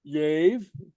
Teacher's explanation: L before a slender vowel, remember that's an I or an E, it sounds like a Y. That's not quite a Y, but you can fake it.